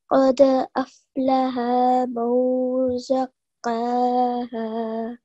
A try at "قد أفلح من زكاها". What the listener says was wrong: Okay, so make sure you don't elongate this ha here. قد أفلح من زكاها.